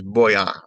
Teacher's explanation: It's not like the English voy, although some countries in Latin America say it that way, but boy. The v has a hard b in many or most Latin American countries.